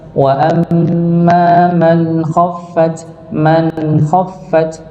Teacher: Sedikit dialirkan. Ini sama nun sukun bertemu dengan huruf kha, dia dibaca idhar, tapi dia punya sifat tawasud untuk huruf nunnya sedikit dialirkan